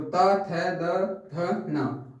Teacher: दंत्य व्यंजन जिनमें दांत हमारे टच करें जीवा को